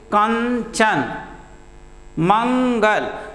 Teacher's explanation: अनुस्वार के उच्चारण में हवा नाक से अधिक तथा मुख से कम बाहर आती है